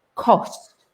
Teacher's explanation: Now, if you look at my mouth, you can actually see it, because cost in terms of money is a round. It's the O sound, cost. You see my lips go round.